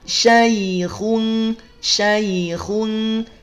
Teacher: ya sukun, sebelumnya ada fathah maka harfulin, bacanya lunak.